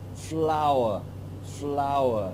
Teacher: the schwa is coming into place at the end of the word to make the second syllable